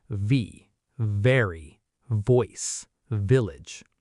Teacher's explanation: For the V sound, your top front teeth rest very gently on your bottom lip, just a light touch. Then you let air and voice vibrate through. You can feel the vibration on your lip and your teeth.